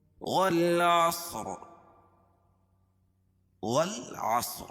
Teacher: اور صاد کو موٹا پڑھیں گے کیونکہ حروف مستعلیہ میں سے ہے